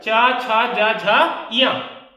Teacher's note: च वर्ग का उच्चारण है तालु, कंठ के आगे ऊपर छत तालु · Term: तालव्य